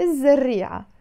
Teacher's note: all the words in Arabic that start with the Z sound, the Zain, we don't pronounce the L before them